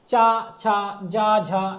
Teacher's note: चा वर्ग के चारों पांचों के पांचों अक्षर का उच्चारण स्थान क्या होता है तालब